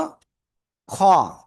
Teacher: তার মানে জিহ্বার গোলার কাছাকাছি। গলার শেষ ভাগ থেকে অক্ষরটা মোটা আওয়াজে উচ্চারিত হয়